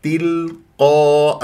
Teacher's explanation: القاف مفخمه مرتبه اولى لانها مفتوحه بعدها الف